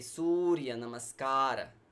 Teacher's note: series starts with Surya Namaskar and we say Surya Namaskar so the oh is long and in namaskara the syllable car is also long